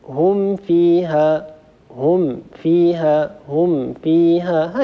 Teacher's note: بمجرد أن نطبق على الميم هم سنجد أن أطراف الثنايا العليا على باطن الشفة السفلى، فمباشرة ننتقل إلى الفاء . هم فيها هكذا بتلطف وبسهولة من غير أن نتكلف. نسمع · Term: الإظهار